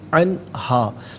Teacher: انہم مواقعوہا ولم یجدوا، ولم یجدوا، عن علیحدہ، ہا علیحدہ، ملا کر پڑھیں گے عن ہا، نون ساکن کے بعد ہا حرف حلقی، تو نون ساکن کو یہاں اظہار کے ساتھ پڑھیں گے، غنہ یا اخفا نہیں کیا جائے گا